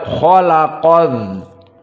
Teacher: lam tidak dibaca karena lam di sini asyamsiyah. Maka langsung masuk kepada idgham adza, maka khalaqadz, maka alif lam maktubah tetapi tidak tersentuh dengan lisan, maka langsung dibaca kepada khalaqadz.